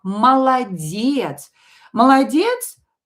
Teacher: Both o's will be pronounced as a.